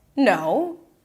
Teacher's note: Again, rising, rising intonation. I know it's not over yet. Something else is coming up.